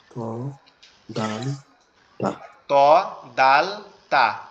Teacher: ত দাল তা এই তিনটা হচ্ছে আমাদের জিহ্বার আগা সামনের দুই দাঁতের গোড়ার সাথে, অর্থাৎ এই উপরের যে দুই দাঁতের গোড়ার সাথে লাগবে, গোড়ার অংশের সাথে।